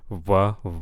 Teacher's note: it's kind of in between an English W and a v